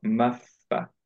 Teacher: majority আমরা মাফা, করি মাফা, but actually এটা এক্স্যাক্টলি লাহানজালি না, মেজরের না, মিনিং চেঞ্জ হয় না, কিন্তু অ্যাকচুয়ালি পড়ার নিয়ম হচ্ছে যে আমরা প্রপারলি পড়তে গেলে মাফ একটু বাতাসটা বের করে তারপরে ফা পড়বো